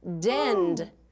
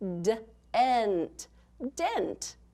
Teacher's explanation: It's still one of those ending blends, isn't it? But instead of ending with the D, it ends with the T